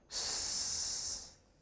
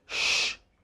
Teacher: You say s, whereas in the production of sh, okay, tongue is rolled backwards, lips are slightly rounded, and there is greater pressure on the blade of the tongue